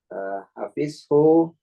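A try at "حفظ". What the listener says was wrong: hafizo. Hafizo bukan hafiz tuh. Hafizo.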